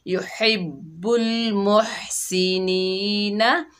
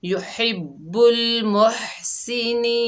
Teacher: वक्फ की हालत में नून का ज़बर ख़त्म हो गया, नून को हमने आर्ज़ी सुकून दिया, यानी नून साकिन हो गई, वक्फ हुआ वक्फ बिल अस्कान।